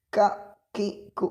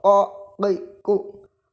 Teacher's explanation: Kalau qa tidak mengeluarkan udara dan membaca juga berbeda.